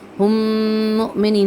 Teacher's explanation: اس میم کو اس میم کے ساتھ مرج کر دیتے ہیں۔ یہاں پہ ویسے 3 میم ہوتے ہیں، ایک میم یہ والا ساکنہ، دوسرا میم جو اس مشدد کے سائن میں ہوتا ہے، اور تیسرا میم یہ والا حرکت والا یعنی کہ پیش والا، ٹھیک ہے۔ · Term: ادغام شفوی